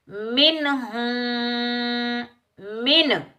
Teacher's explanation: नून की आवाज को हमने जाहिर करना है, ना गुन्ना करना है ना इख्फा करना है। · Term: इजहार